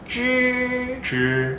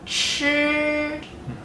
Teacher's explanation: instead of at the front of the mouth like the Q, the CH and the ZH both are a curled tongue. Have your tongue at the back of your throat almost, and you make like a chur.